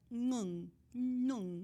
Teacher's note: something like an ng at the first of the word